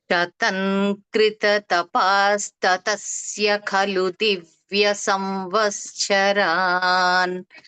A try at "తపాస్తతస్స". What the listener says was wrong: తపాస్తతస్య అంటున్నారు, అలా కాకుండా తపాస్తతస్స, సా కింద సా, అలా పలకండి.